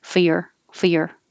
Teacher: you can drop the R for your because it's not stressed. You're hardly ever going to stress for your entertainment.